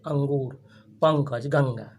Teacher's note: अनुस्वार स्वर के बाद आएगा और ध्वनि नाक से निकलेगी